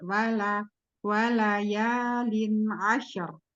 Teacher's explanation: Wal tidak ke atas suara huruf lam lam istifal